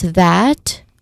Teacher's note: which starts with a voice TH sound, followed by a short A vowel sound and ends with a letter T sound.